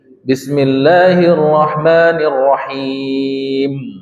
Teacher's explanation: mim ditutup Nun enggak ditutup mulutnya